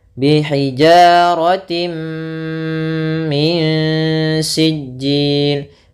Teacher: Idgham bi gunnah nanti itu khusus di sini, yaitu adanya tanwin bertemu dengan mim, ini idgham bi gunnah. Yaitu jelas masuk tanwinnya ke mim.